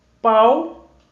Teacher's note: A sílaba tônica da palavra palmeira é eira.